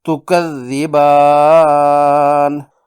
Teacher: تکذبان میں با کی زبر اور الف سے الف مدہ ہے، نون کی زبر وقف کرنے پر جزم میں بدل گئی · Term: مد عارض